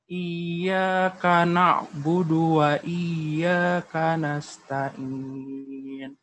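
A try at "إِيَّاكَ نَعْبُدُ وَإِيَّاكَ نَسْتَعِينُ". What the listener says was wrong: Bapak silakan dikeluarkan ainnya ya. Ainnya tolong di totalitas ya. Dalam melafalkan ainnya terlebih di nasta'in ya.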